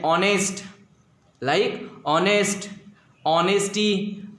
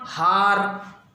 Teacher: few words in English which begins with H, but the sound of H is silent. Yes, like honest, honesty, are. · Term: silent H